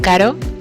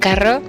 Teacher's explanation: the apex flaps once against the alveolar ridge. This is a flap.